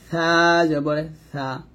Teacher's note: আমরা যখন সাটা উচ্চারণ করব, জিহ্বাটা উপরে দাঁতের আগায় লাগাবো, জিহ্বা উপরে দাঁতের আগায় লাগবে, নিচে দাঁতে লাগানো যাবে না।